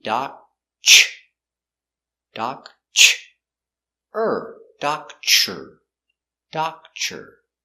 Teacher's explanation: when you have TR together it makes the chicken sound CH